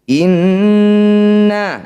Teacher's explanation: nun bertasydid disebut bacaan gunnah musyaddadah, dengungkan 2 harokat.